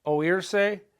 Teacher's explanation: Oírse is breaking up the diphthong.